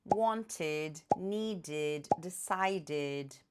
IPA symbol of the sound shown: ɪd